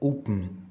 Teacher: इसके बाद एक ध्वनि आती है जो ब से माँ जाने के क्रम में अवरोधित होती है, यह अब ब का अवरोध और माँ का गुंजन मुंह के भीतर। यहाँ माँ का उच्चारण पूर्ण रूप से मुंह के भीतर खोखले स्थान में ब के अवरोधन के बाद गूंजता है।